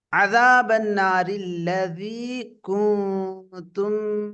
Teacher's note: இந்த ராவை தர்கீகாக ஓத வேண்டும் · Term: அர்ராஉல் முரக்ககா